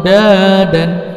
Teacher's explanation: Baca panjang 3 harakat dan dibaca eng, ya, dibaca nun 3 harakat dan dibaca eng. · Samar-samar adalah perubahan yang awalnya nun berubah kayak eng. Ya, enggak jelas dibacanya. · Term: ikhfa